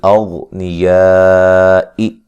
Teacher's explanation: یہاں غین کو موٹا ادا کریں گے